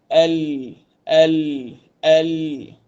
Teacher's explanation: Huruf lam ni bertemu dengan langit-langit yang hampir dengan gusi gigi kacip atas. Dia tepi lidah juga.